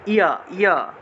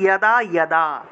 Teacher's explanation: আচ্ছা, তারপর অন্তস্থ জ, অন্তস্থ যে জায়গাতেই পাবো সেই জায়গাতেই ইয় উচ্চারণ করতে হবে, ই এবং অ এর মতো উচ্চারণটা আসবে